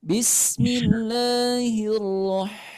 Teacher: ha ini keluarnya dari tengah-tengah tenggorokan